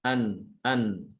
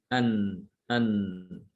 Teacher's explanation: Disertai dengan suara dari hidung. An ada suara gunah di situ ya.